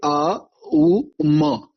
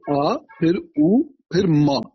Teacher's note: फिर म, जिसमें हमारे जो होंठ हैं वो पूरी तरह बंद हो जाते हैं